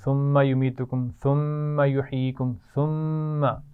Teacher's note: ثم میم پر غنہ ہو رہا ہے